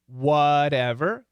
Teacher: the flap t is actually like a d not an r i should say not an american r